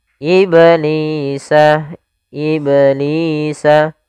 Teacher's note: Di sini ada bacaan qalqalah pada lafal huruf ba yang disukunkan. Apabila kita mendapati di dalam bacaan Al-Qur'an kita ada huruf ba yang disukunkan, maka ia kita namakan dengan bacaan qalqalah.